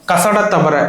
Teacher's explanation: அவ்வளவுதான். கசட தவற இதெல்லாம் வன்மையாக ஒளிக்குது. அதனால வல்லினம்.